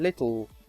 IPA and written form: lɪtl̩ (little)